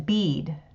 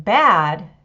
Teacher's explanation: the tongue in bead rises up. But the A sound, as in bad, makes the tongue come down a little bit